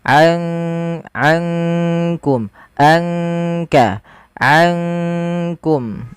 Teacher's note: Maka ankum langsung kepada makhraj disamarkan kepada makhraj kaf. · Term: ikhfa